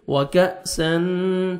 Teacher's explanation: کاف باریک پڑھیں گے اور آگے حمزہ ہے، جھٹکے سے پڑھیں گے